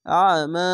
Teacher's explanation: আইনকে একটু গলা চিপে পড়বেন, মোটা করে পড়বেন